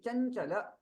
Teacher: लेकिन आगे वाला जो च वर्ग है, च वर्ग तालव्य होने के कारण ये तालु नासिक्य हो जाएगा।